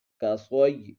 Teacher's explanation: صاد کو پر پڑھیں گے، یہ حروف مستعلیہ میں سے ہے۔